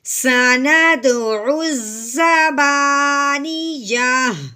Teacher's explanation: لیکن یہاں ہم نے یہ بھی بات ذہن میں رکھنی ہے کہ جب آخر والا حرف یعنی وقف کے ساتھ جو آخر والا حرف ہے اگر وہ گول تا ہے، دیکھیے گول تا ہے تو ہم نے کیا کرنا ہے کہ وقف کی صورت میں تا کو ہٹا دینا ہے، پیچھے ہم نے صرف ہا کی آواز نکالنی ہے